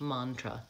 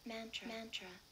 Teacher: It's the vowel ah, like in hot and not, and it's a schwa in the second syllable because it's unstressed, mantra. That little line there before the mon shows me that that's the stress syllable, mantra.